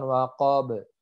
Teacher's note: ba yang sukun karena waqaf dia harus dipantulkan.